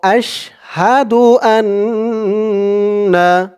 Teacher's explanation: আন বলে গুন্নাহ করতে হবে